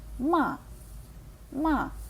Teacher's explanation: інтонація падає вниз як ніби ми кидаємо м'ячик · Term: останній тон